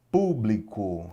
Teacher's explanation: Público, separei a sílaba aqui, ó. Sílaba tônica é o pu.